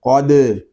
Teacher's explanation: قاف یہ حروف مستعلیہ میں سے ہے، اس کو پر پڑھیں گے، دال ساکن ہے، اس کو کلکلے کے ساتھ ادا کریں گے